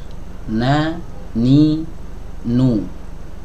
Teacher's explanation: keluar huruf nun ya diiringi dengan gunah yang ada di Pangkal hidung atau alhaisyum